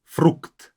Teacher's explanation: At the end, we have this kt. Frukt. Make sure that you pronounce both consonants. Even though when the consonants are at the end, they're not as enunciated, they're not as clear when pronounced them.